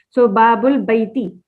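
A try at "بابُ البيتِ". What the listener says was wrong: Babul Baiti. Very good.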